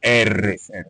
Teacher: a consoante R é chamada de consoante fricativa, ela vibra, R, vibra as cordas vocais